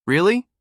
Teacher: Americans use intonation to shape rhythm. When they're excited, the pitch goes up.